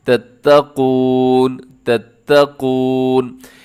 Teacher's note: اس میں کیا کرنا ہے آپ نے قاف کو موٹا پڑھنا ہے، اسے تتقون نہیں کر دینا بلکہ تتقون، تتقون۔